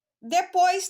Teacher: Eu tenho o O e o I que não se separam, porque o O eu vou pronunciar com mais força e o I com menos força. Então, aqui eu tenho um ditongo.